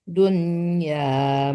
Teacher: jangan disamarkan ke ya tapi dijelaskan mati nunnya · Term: izhar mutlak